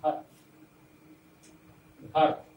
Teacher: घ पर स्ट्रेस है, र हल्के से जाने दिया जाता है, घर। तो अंतिम का जो अकारांत वर्ण है, पूर्व भी मैंने बताया था कि उसको हम आधे वर्ण जैसा उच्चारण करते हैं उसका। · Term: बलाघात